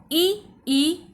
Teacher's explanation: इ ई तालव्य अर्थात तालु का स्पर्श होता है।